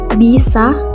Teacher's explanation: huruf i kecil tinggi ke atas pada silabel terbuka seperti kata bisa